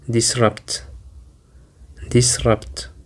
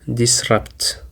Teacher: It includes two syllables actually and the stress is on the second syllable. Disrupt. It is actually a verb and it means to stop something from happening smoothly or as planned.